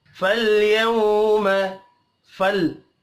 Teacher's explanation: लाम साकिन पर कलकला नहीं करना